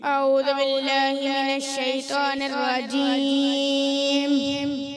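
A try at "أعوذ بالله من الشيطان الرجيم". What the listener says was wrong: اعوذ، دال کی پیش کلیئر کرنی، ٹھیک ہے؟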